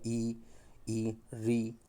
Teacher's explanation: अपना जीभ का आगे का भाग ऊपर उठेगा